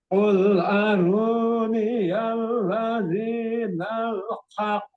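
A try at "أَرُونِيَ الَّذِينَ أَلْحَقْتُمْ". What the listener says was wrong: Nah, bukan nal. Ya, itu yang dimaksud tadi. Bukan, betul ini yang tadi dibaca ini bukan nal tapi ladzina al-haq. Qul aruniyal ladzinal. Pak bacanya nal. Nah, itu harusnya ladzina al-haq.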